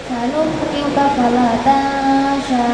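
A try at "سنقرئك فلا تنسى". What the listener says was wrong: Nah, ini Ini hurufnya bukan huruf shin tapi sin. Makanya tadi dikatakan sholat harus bisa membedakan mana sin, shin sama shot. Ini makhrajnya berdekatan tapi beda. Makhrajnya berdekatan tapi beda. Sanuqri'uka fala tansa biasa. Karena ini huruf sin.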